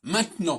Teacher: Et si j'enlève le E de maintenant, j'ai maintenant. Et donc, j'ai deux consonnes, le T et le N, qui sont réunies, qui sont jointes.